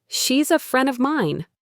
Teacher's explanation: Naturally, she's a friend of mine. The D gets dropped.